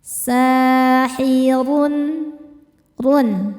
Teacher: Huruf ro dibaca secara tafkhim karena berharakat dommah tanwin. Cara bacanya ditebalkan.